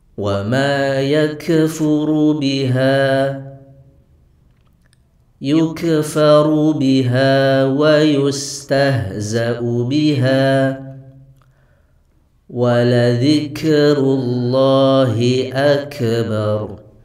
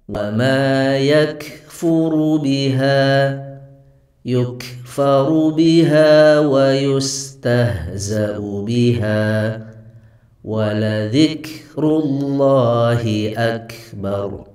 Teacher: Jadi huruf kaf ini tidak boleh keluar suara saat mengucapkannya.